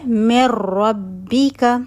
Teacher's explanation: बगैर गुन्ना के इदगाम हो रहा होगा। गुन्ना की आवाज नहीं आएगी। · आगे र आ रहा था। नून र में मर्ज हो गया। अब हम नून नहीं पढ़ रहे और र की आवाज आ रही है और गुना नहीं हो रहा। · تو ایگزامپل ہے میں ربی کا، ٹھیک ہے، نون ساکن تھا، آگے را رہا تھا، نون را میں مرج ہو گیا، اب ہم نون نہیں پڑھ رہے اور را کی آواز آ رہی ہے اور غنہ نہیں ہو رہا۔ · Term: بغیر غنہ کے ادغام